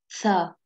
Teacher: From the top of tongue and the inner edge of the upper teeth.